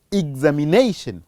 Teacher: it is the second syllable that has to receive a stress, and the second from the last, which also has to receive a stress